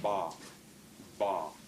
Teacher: It's called voicing. It's a soft voiced labial stop. These, by the way, are called stop sounds because the air, as you're producing it, as you play the note, the air is completely blocked somewhere in the speech, in the mouth, in the oral cavity.